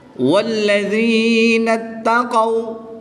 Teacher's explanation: واو ساکن سے پہلے حرف پر زبر ہے تو یہاں پر واو لین ہوگا، لمبا نہیں کریں گے